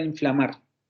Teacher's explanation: ejemplo en la palabra inflamar tenemos tres consonantes juntas la nasal la nasal alveolar sonora tenemos la labio dental freak ativa sorda y tenemos la lateral